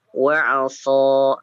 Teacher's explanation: wa 'asa hanya 2 harokat saja, jangan terlalu dipanjangkan.